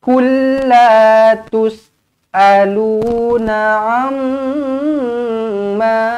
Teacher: Mim sabdu wajibul gunna, dengungkan dua harakat.